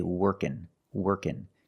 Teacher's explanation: So the ng can make the n sound.